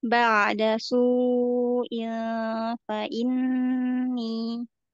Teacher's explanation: Tanwin ketemu fa-nya ditahan dulu Umi. Ada ikfa di situ.